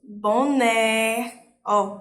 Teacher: o né é mais forte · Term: oxítonas